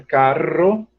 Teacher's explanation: o italiano diria caro porque só vibra duas vezes